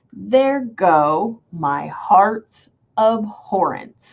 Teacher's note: it sounds unstressed, stressed, unstressed, stressed, because it sounds kind of high and then low, high and then low, high and then low. · unstressed, stressed, unstressed, stressed, because I go up, down, up, down, up, down in the sounds that the words make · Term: iambic